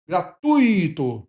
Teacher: Então é uma palavra paroxítona e o U é o tônico, tá? É a vogal tônica.